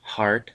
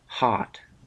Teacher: letter r today an english accent is non-rhodic this means that the english do not pronounce the r making words like heart sound like hot